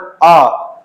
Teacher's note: जीभ के मध्य हिस्से से उच्चारित किए जाते हैं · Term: मध्य स्वर